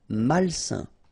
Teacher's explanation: A-I-N together, it's a nasal and it's un.